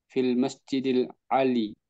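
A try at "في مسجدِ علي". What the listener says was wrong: Lamnya tidak ada di sini. Fi masjid Ali.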